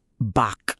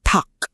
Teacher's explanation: Kapag ang mga letrang kyok, kyok or k ay nasa dulo ng isang syllable, lahat sila iisa lang ang bigkas. Nagiging isang matalas na K stop sound. Parang pinipigilan mo yung hangin.